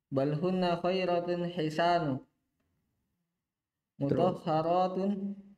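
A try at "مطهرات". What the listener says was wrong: Enggak ditanwin.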